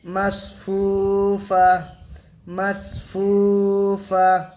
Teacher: তাহলে এখানে সাকিন হলে, হাজ সাকিনা হলে গোলতা হায় সাকিনা হয়ে যাবে, ঠিক আছে? আয়াতের শেষে যখনই গোলতা আসবে, গোলতা কিন্তু হায় সাকেনা হয়ে যাবে।